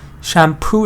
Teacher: Shampoo stresses on poo.